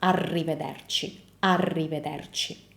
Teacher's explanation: Double R means that you keep the sound for longer